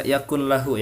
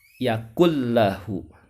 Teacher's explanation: dimasukkan ke huruf lam dan ro tidak ditahan atau tidak dibaca dengung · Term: idgham bilagunnah